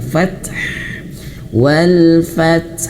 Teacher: huruf ta ketika dia sukun keluarkan sifatnya fat dan di depan ada huruf ha yang juga mati karena di akhir ayat maka juga keluarkan sifatnya anginkan fath